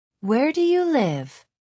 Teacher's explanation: Put some stress on the you.